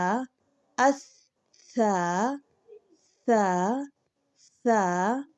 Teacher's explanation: سا ادا کرتے وقت جو زبان کی نوک ہے یہ اوپر والے دو دانتوں کے کناروں سے لگے گی